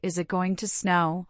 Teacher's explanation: note the intonation in questions like Is it going to snow? where the voice often rises at the end